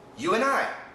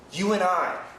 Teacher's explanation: The N cancels the D.